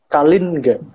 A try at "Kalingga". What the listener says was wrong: Ya, bukan Kalingga ya. Bukan Kalingga, tapi Kalingga. Jadi dipisah. Ya, Kalin sama Ga-nya dipisah. Karena itu pengucapan dalam Sanskerta harusnya seperti itu. Cuman di zaman Jawa yang sekarang itu, huruf N di belakang itu kadang-kadang menjadi NG. Jadi misal, jadi kadang-kadang diucapkan menjadi Kalingga. Tapi sebenarnya bukan.